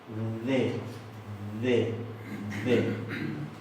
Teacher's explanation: Y esa es una D suave. Siempre interdental, siempre fricativa. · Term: D interdental